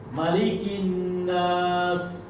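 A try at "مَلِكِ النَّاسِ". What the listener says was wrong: লি একটু বাড়ছে, মালিকিন নাস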